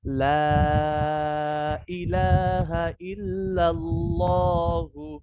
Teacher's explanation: আল্লাহ শব্দের ডাইনে জবর আসলে আল্লাহ শব্দের লামকে মোটা করে পড়তে হয়।